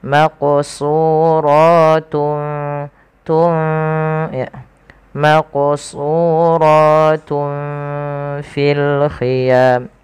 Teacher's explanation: Jadi nunnya tidak terlalu dibaca dengan jelas, tapi dia disamarkan kepada huruf selanjutnya. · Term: ikhfa